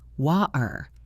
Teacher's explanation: use a glottal stop where the T is swallowed in the throat